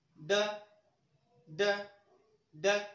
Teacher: पीछे से आगे की ओर हमारी जिह्वा गति करती है, आती है, फिर पीछे जाती है। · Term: उत्क्षिप्त व्यंजन